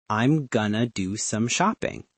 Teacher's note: The phrase, I am going to. A native speaker, especially an American, will almost always reduce going to into gonna